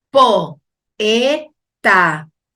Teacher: Esas vocales se separan porque hay dos vocales abiertas, ¿sí? No van a permanecer juntas en la misma sílaba. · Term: hiato